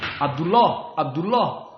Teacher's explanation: Ain kebanyakan masuk kepada Hamzah